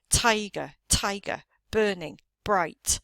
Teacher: the emphasis falls on the first syllable in each of those words